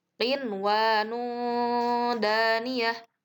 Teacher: ada nun mati menghadapi wawu dalam satu kata. Maka nunnya itu dijelaskan. Walaupun di situ wawu termasuk huruf idgham, namun karena dalam satu kata maka nunnya itu dijelaskan.